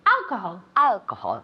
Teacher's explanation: alcohol, the accent goes on the first syllable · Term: accent on the first one